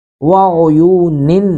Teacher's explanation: ظلال وعیون، وقف کریں گے تو وعیون پڑھیں گے، لیکن لام پر وقف نہ کیا جائے تو زیادہ افضل ہوتا ہے، تو یہاں پہ ملائیں گے وَعُيُونٍ، نون تنوین کے بعد واو ہے تو ادغام با گناہ کریں گے